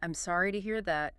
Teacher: The pacing should be slow, respectful, and genuine. Put a little gentle emphasis on sorry.